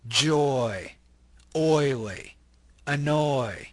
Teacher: the O Glides into the e sound notice o o if you say them separately you can kind